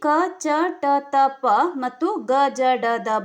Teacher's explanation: ಕಡಿಮೆ ಉಸಿರಿನಿಂದ ಉಚ್ಚರಿಸಲಾಗುವಂತಹ ವ್ಯಂಜನಗಳಿಗೆ ಅಲ್ಪ ಪ್ರಾಣಾಕ್ಷರಗಳು ಎಂದು ಕರೆಯಲಾಗುವುದು